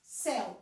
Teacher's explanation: eu sei que o E é a minha vogal e o U é metade. Se ele é metade, ele é a minha semivogal, ok?